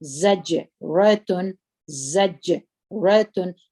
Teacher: جیم قلقله کوي، په قلقلې صفات پکې کې دي او د جهر صفات پکې کې دي